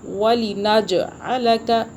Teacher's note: جیم پہ جھٹکا دیں گے، یہ قلقلہ کا حرف ہے یعنی کہ جھٹکے کا